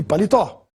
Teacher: a palavra palitó tem a sílaba mais forte na última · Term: oxítona